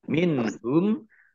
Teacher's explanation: nun sukun bertemu dengan huruf ha bacaan izhar dibaca jelas